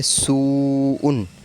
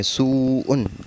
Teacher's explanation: اب اس میں واو ساکن ہے، اس سے پہلے ہے پیش، تو ہم اس کو کھینچ کے پڑھیں گے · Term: حروف مدہ